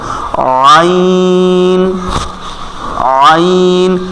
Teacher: হবে আ যেখান থেকে আইন ঠিক ওখান থেকে আইন আইন আমাদের কণ্ঠনালীর ঠিক মধ্যখান থেকে উচ্চারণ হবে